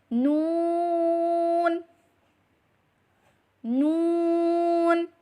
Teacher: زبان کا کنارہ اور انیاب سے ثنایا تک کے دانتوں کی جڑوں سے ادا کریں